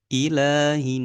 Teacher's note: Nun tasydid harus diberi haknya berdengung